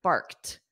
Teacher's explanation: A cat meows, a dog barks. Now, because this is the end of the sentence, I'll pronounce that T more, barked. But in a natural sentence, if barked was in the middle of a sentence, it would be a very soft T.